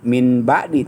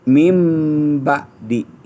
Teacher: Nun mati atau tanwin menghadapi ba berubah menjadi mim. Jadi bukan min ba'di tapi mim ba'di. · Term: iklab